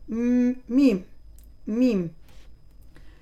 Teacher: Alors, le point de sortie de cette lettre, c'est les lèvres, bien sûr. On colle les lèvres en ajoutant le nasillement du nez.